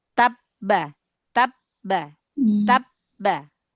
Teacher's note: Tab sudah berhenti. Tertahan benar-benar suaranya terkunci gitu.